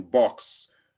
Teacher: the sound comes with your upper lip and your lower lip coming together it's a labal sound so you say b as in box